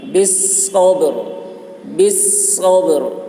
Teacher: با میں قلقلہ اور را کی آواز بھی نکل رہی ہے وقف کرنے کے وقت میں